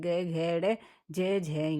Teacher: किसी भी वर्ग के तीसरे चौथे व पांचवे वर्ण घोष कहलाते हैं